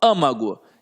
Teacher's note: Se eu falo âmago, é porque está na antepenúltima sílaba, aqui no A.